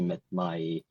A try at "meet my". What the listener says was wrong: Sounds like to met my, right? I guess that's a pronunciation mistake. It could be seen as a grammar mistake.